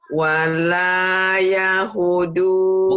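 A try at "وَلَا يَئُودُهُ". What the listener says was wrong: Bukan yahu, Bu. Ya'u. Ya'u. Ya'u. Du-nya pendek, Bu. Wala ya'uduhu hibzuhuma.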